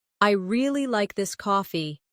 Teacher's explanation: Now coffee is the focus.